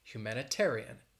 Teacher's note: Humanitarian, six syllables. And the stress is on that fourth syllable, that ter.